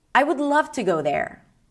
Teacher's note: I would love to go there. So, I'm ending the sentence with a really low note.